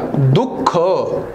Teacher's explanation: दुःख दुनंतर थोडासा ह सारखा उच्चार बाहेर पडतो आणि त्यासोबत फुफुसा मधून थोडीशी हवा बाहेर पडते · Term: विसर्ग